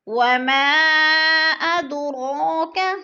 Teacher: حروف مدہ کے بعد حمزہ دوسرے کلمہ میں مد منفصل، 4 الفی مد 4 الف کے برابر کھینچ کر پڑھنا ہے۔ وما ادراک، اد پہ قلقلہ ہو رہا ہے، ہلا کے پڑھنا ہے، اور رو کے اوپر کھڑی زبر ہے، تھوڑا سا کھینچ کے۔